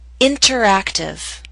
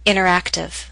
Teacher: I'll first read the word with careful pronunciation you will hear the pronunciation of T then I'll repeat the word with fast informal pronunciation you will not hear the T